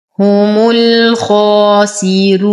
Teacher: هم نتم ضمة الهاء والميم وننتقل منها إلى إسكان اللام القمرية. هم الخاء نفخم الخاء بأعلى درجات التفخيم فهي مفتوحة وبعدها ألف سين نتم كسرة السين. · راء مضمومة وقبلها كسر فورش يرقق هذه الراء. نقف على النون بالسكون العارض 2 4 6 حركات مد عارض للسكون.